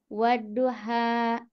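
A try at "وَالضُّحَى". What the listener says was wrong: Wadduha. Nah, wadduha itu jangan terlalu dipanjangin ya. Nah, ini mungkin karena sering membacanya seperti itu jadi terpanjang. Wadduha. Tapi 2 harakat saja. Wadduha wallaili idza saja.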